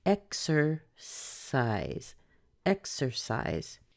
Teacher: The AI symbol represents A plus E, so we have I, size, and then we finish with the voiced Z sound